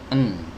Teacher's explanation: Huruf nun ini adalah huruf yang dikeluarkan dari ujung lidah bertemu dengan gusi ya. Ujung lidah bertemu dengan gusi n.